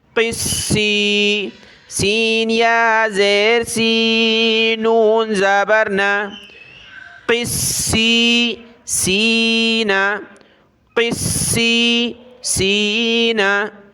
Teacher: قاف کو موٹا کیا، سین کو سخت کرنا ہے تشدید کی وجہ سے